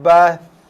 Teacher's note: Hati-hati, ramai baca dengan bunyi bas. Bas kita dah tukar huruf tha kepada huruf sin.